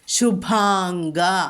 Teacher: ശുഭാം എന്നുള്ളത് അനുസ്വാരം നമ്മൾ ഉച്ചരിക്കില്ല, അവിടെ അങ്ങ് ഉച്ചരിക്കണം.